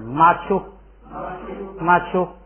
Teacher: 注意前边那个马呀，要有上加字之后要读平声就行了